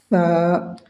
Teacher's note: زبان کو ہلکے سے یعنی زبان کے نوک کو دانت کے باہر نکالیں گے